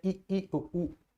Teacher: संवृत यानी जिनके उच्चारण में मुख द्वार सकरा हो।